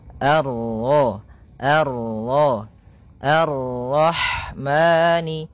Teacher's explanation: bertemu dengan huruf ro yang berharakat tasydid maka rnya kita baca dengan tafkhim · Pada bacaan Ar-Rahmani di sini ada alif dan lam di awal bacaan, maka kita baca dengan bacaan al, sebagaimana yang di atas, al. Kemudian ini bertemu dengan huruf ra yang berharakat tasydid, maka ra-nya kita baca dengan tafkhim